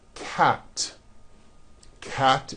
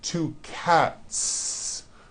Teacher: there's no voicing at the end of that word the S remains unvoiced